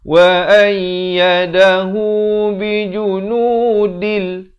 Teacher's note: tanwin bertemu lam, idgham bila gunnah